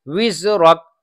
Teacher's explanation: اب واو نکالنے کے لیے ہونٹ الگ ہو جائیں اور ہونٹ گول ہو جائیں، یہ دو باتیں ہونی چاہیے، ہونٹ دونوں ہونٹ آپس میں چپکے نہ رہیں بلکہ الگ الگ ہو جائیں اور گول ہو جائیں۔ وزرک، وا ایسی وا میں بھی ہونٹ گول ہو جانے چاہیے۔